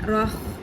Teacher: وسط حلق سے ادا ہوگا اس لیے اس میں ہلکی سی سانس کی آواز ہوتی ہے، لیکن خراش بالکل بھی نہ آنے پائے اس کے اندر، ورنہ وہ خو بن جائے گا.